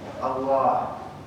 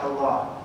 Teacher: Makanya Allah itu di antara lam dan ha agak panjang sedikit ya.